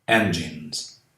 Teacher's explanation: Aqui eu não falo o I final. Depois de N, o S tem som de Z.